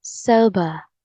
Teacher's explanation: is clear and the stress is on the first syllable and the British English is soba the letter R sound is dropped